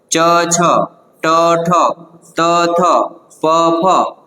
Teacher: સ્વરતંત્રીઓ એની અંદર કંપન થાતું નથી અને એના કારણે અવાજ ઉત્પન્ન થતો નથી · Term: અઘોષ વર્ણો